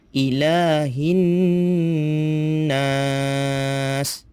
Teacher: nun tersebut ada syaddah iaitu sabdu, maka perlu kita dengungkan bunyi nun tersebut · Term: didengungkan